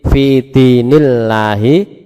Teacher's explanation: Lafzul jalalah dibaca tarkik tipis, dibaca tipis. Sekali lagi fi dinillahi lam tarkik, ya.